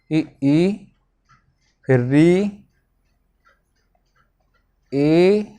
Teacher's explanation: तो अब जो स्वरों के उच्चारण में जीभ का अग्र भाग काम करता है उसे अग्र स्वर कहते हैं।